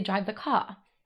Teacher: one linguistic feature from British English, which we can call R-lessness